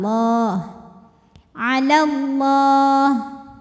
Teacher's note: bunyinya Jadi pendek kalau wasal alallahi lam pada lafaz Allah atau lam jalalah dibunyikan secara tafkhim karena huruf sebelumnya berbaris fathah jadi bacanya tebal